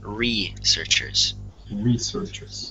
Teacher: you want to make sure to stress the first syllable in that word.